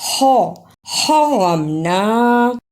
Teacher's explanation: ہا کو ادا کرنے کا طریقہ حلق سے آواز کو رگڑ کر نکالنا ہے